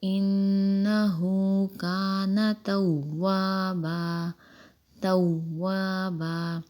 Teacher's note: واو مشدد ہے تو تھوڑا جماؤ کے ساتھ پڑھیں گے